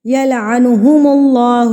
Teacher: اللہ کو پر پڑھنا ہے کیونکہ اللہ سے پہلے پیش ہے